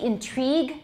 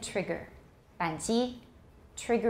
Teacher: we say intrigue it's long but we say trigger trigger is a short